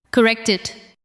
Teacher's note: The final sound of correct connects to it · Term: linking